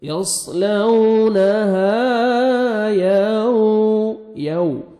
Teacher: واو کو lips round میں لے کے جائیں گے اچھی طرح واو ادا ہو، واو لین ہے، واو ساکن سے پہلے زبر ہے، نرمی سے ادا کرتے ہیں۔